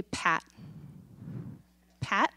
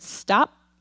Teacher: the word pat do you feel that puff of air okay you just made an aspirated P there's air to it